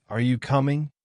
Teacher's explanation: the tone Rises at the end